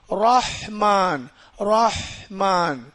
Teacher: இந்த ரா வந்து வாய் நிறைய ஓதணும் ஏன்னா ராவுக்கு ஜபர் இருக்குது